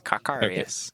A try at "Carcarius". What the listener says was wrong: Earliest you every now and then you say Cacarius, not Carcarius.